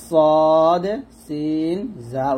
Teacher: তারপর হচ্ছে সদ সিন জা, এই 3টে হরফ এক জায়গা থেকে উচ্চারণ করতে হবে, জিহ্বার আগা সামনের নিচের দুই দাঁতের মাঝখানে লাগিয়ে সদ সিন জা উচ্চারণ করতে হবে